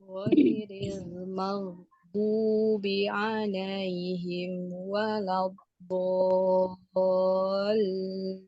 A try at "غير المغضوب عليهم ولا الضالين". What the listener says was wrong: Ditebalkan lagi aliran suara bodnya ini tadi ya. Walau bo, karena sudah siap-siap di makhrajnya ya. Walau bo, jangan walau ini kurang tebal ya.